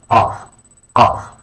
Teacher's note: a deep K sound made from the back of the throat